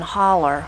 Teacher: You'll notice that OW, many times we change that to an ER and put that R sound on the end. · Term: adding an R